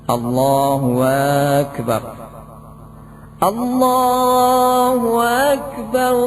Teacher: Nomor 20 mengganti hamzah dengan wawu dan memanjangkannya